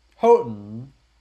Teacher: Notice the T is basically silent.